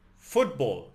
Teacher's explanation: The emphasis is on the first syllable.